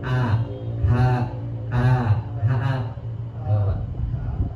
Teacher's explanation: H-nya di mana? Di tenggorokan bagian bawah